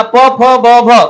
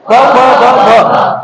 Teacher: आपल्या होठ एकामेकाला छेदतात, बरोबर आहे, आणि त्याला स्पर्श होऊन आपला प फ ब भ निघतात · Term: स्पर्श व्यंजन